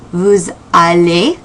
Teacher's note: pronounce that S at the end of nous or vous like a Z to link